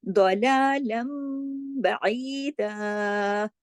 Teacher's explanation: नून की आवाज सुनाई नहीं देती, बल्कि उसकी जगह मीम की आवाज सुनाई देती है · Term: इक़लाब